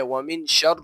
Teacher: شین جو کہ حروف اخفا میں سے تھا یہاں پر غنہ کیا جائے گا